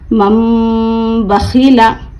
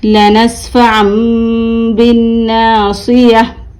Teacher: नून को मीम से बदलकर यानी नून को छोड़कर मीम से बदलकर गुन्ना और इख्फा के साथ पढ़ेंगे। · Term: इक़लाब